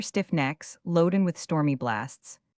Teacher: Though a line of Milton has not the ordinary movement of an English heroic verse, the accent falls upon the 3rd and 6th syllables.